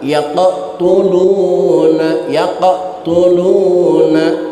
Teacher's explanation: Contoh qalqalah sugro, Qaf yang mati di tengah kalimat